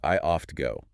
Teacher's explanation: you literally have to stop your breath between the T and the G.